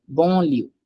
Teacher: I don't say n sound at all. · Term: nasal sound